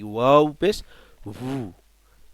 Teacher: এই ওয়াওটা দুই ঠোঁট গোল করে মাঝখানে একটু ফাঁক রেখে ওয়াও উচ্চারিত হবে